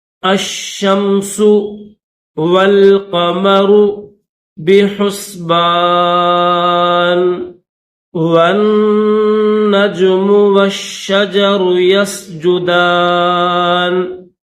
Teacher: الشمس یہ جو حمزہ ہے اس حمزہ کو شین کے ساتھ ملائیں گے، شین کے اوپر یہ تشدید ہے، پھر اس شین کو درمیان میں یہ میم ہے، اس میم کے ساتھ ملائیں گے، آخر میں سین کی آواز نکالیں گے، پھر یہ سین ہے تو سین کو پڑھتے وقت سیٹی کی آواز پیدا ہونی چاہیے